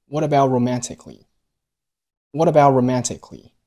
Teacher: about 结尾的 t 出现了失去爆破的现象，只做口型和舌位，但是把声音给吞进去